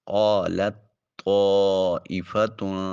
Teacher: قالت طائفہ میں پہلی جو تا ہے اس کو ادا نہیں کریں گے، قال میں لام کو طائفہ کی طا کے ساتھ ملائیں گے اور تا کو جو ہے وہ چھوڑ دیں گے۔ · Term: ادغام متجانسین